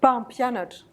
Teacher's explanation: Presque vous n'entendez pas le M.